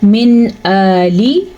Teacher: نون ساکن کے بعد حروف حلقی میں سے حمزہ آیا ہے تو ہم نون ساکن کو ظاہر کر کے پڑھیں گے